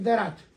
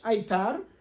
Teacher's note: Мы устанавливаем жесткое соответствие греческой фиты и абхазского придыхательного т.